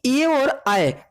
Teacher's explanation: ए और आय का उच्चारण स्थान कंठ तालु होता है